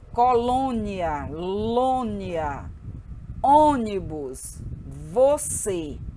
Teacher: o acento circunflexo ele indica que a vogal tônica possui timbre fechado